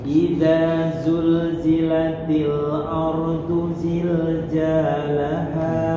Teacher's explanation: Itu zai yang terakhir jangan kelari ke ja. Zalah tetap huruf zai.